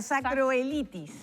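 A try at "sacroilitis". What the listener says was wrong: Sacroielitis. Y la I primero, sacroielitis.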